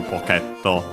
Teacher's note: low high and then low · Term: accent